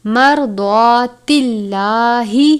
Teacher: مرضات اللہ را ساکن ہے یعنی را کے اوپر جزم ہے. را ساکن ہے اس لیے را کو پر پڑھتے ہیں